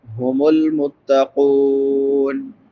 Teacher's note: قاف کے بعد واو مدہ ہے، واو ساکن ما قبل ضمہ یعنی پیش ہے، اس کو ایک الف برابر لمبا کریں گے